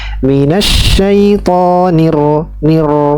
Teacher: Jadi ro ini bergetar. Ada getaran, ya, pada lisan, tapi ini getaran yang ringan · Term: takrir